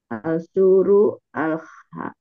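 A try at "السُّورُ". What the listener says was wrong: Iya, ini masih terlihat ya inkonsistensi dalam membaca Al-Samsiyah dan Al-Qamariyah. As bukan al-sur, bukan al-sur. jangan al-sur ya. Jangan kita tidak membacanya al-sur ya.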